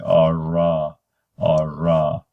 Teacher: We call it retroflexed because the tongue just is retroflexed back and shaped like a spoon, and it is, at least as far as American English, it has labial rounding.